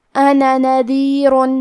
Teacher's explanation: کلمت انا میں الف پر نون پہ زبر ہے لہذا ہم یہ دونوں زبر کو ظاہر کریں گے. آخری میں مد الف کو نہیں ظاہر کریں گے مطلب حرف النون کو صرف زبر سے پڑھیں گے